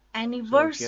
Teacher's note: The stress is on third syllable.